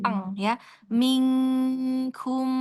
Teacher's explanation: Jadi karena dia makhrajnya jauh dari nun sehingganya e saat menyebutkannya tidak disamarkan tetapi ng-nya jelas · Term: Ikhfa hakiki yang ab'ad, ikhfa hakiki